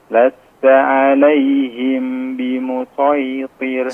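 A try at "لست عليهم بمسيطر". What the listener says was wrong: Ya, agak dipanjangkan. Di situ ada ya ikhfa syafawi.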